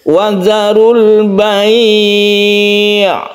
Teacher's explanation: kalau sukun ain karena dia tawasud, berarti kita tidak boleh terlalu menekan huruf ain tersebut.